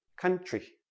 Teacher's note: when we have t r t r together usually sounds like c-h-r